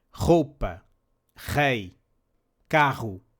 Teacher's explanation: This sound is produced further back in the throat and is closer to the sound of the Spanish J. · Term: strong R